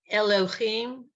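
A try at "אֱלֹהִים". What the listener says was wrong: Nope, it's not a ch. This is a hey.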